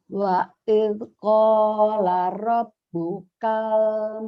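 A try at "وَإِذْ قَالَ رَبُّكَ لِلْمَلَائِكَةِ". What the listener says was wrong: Kayaknya pendek. Robuka lilnya ketinggalan. Wa il qala rabbuka lil malaikah.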